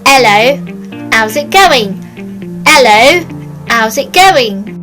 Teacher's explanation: rule number one is no h's we don't need them and get rid of them